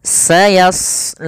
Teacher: Di sini pada lafal shad tebal, karena huruf shad salah satu sifatnya adalah isti'la, yaitu pangkal lidah terangkat. Yang kedua idbaq.